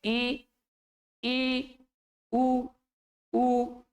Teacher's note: दोनों होंठ साइड से मुख को एक प्रकार से बंद करते हुए प्रतीत हो रहे हैं · जिह्वा साथियों ऊपर तालु की ओर ऊपर उठती है, मुख ज्यादा नहीं खुलता इसमें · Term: समृत स्वर